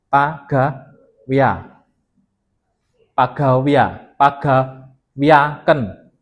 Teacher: vokal E. Ketika dia diikuti oleh vokal A, dia akan menjadi I atau ya. Pagawe ketemu A jadi pagawia pagawia paga wiaken.